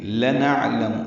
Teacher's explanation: لنعلم، لام کو جلدی پڑھنا ہے، نون کو عین سے ملانا ہے، عین ساکن پہ اظہار ہوگا، یعنی قلقلہ نہ ہو، عین ہلے نہیں اور وسط حلق سے ادا ہو۔